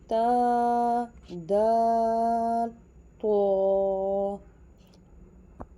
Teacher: تا دال تو، زبان کی نوک اور اوپر کے دانتوں کی جڑ سے ادا ہوتا ہے۔